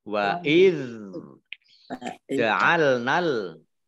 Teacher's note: ingat dzal sukun bukan qalqalah, jangan dimantulkan. · ini fathah alif harusnya mad tabi'i, tapi karena bertemu dengan huruf berikutnya yang sukun, maka dibaca pendek langsung masuk ke huruf yang bersukun, berharokat sukun, yaitu lam.